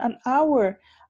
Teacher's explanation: The H at the beginning of an hour is silent. La H es silente, no suena.